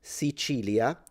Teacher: You can say Sicilia, where the C is pronounced with a ch sound, Sicilia. This is kind of the standard Italian way of pronouncing it.